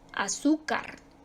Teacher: Su sílaba tónica está en la penúltima, termina en una que no es ni N ni S, termina en R, y por lo tanto se acentúa.